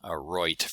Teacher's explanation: One of them is known as Canadian raising, because it happens in Canada as well, where the I diphthong starts more central with something like oi, but only in the context of voiceless sounds.